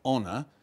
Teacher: we inherit some French words like honor and we don't pronounce the h